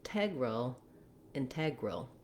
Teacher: integral which has the um stress on the second syllable